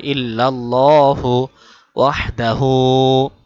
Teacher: ওয়াহদাহু হা গলায় ঢুকবে